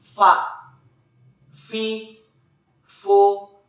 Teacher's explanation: keluar dengan menyentuhkan ujung dua gigi seri bagian atas dengan bibir bawah bagian dalam diucapkan dengan mengalirkan suara sekaligus dengan udaranya dengan lembut contoh fax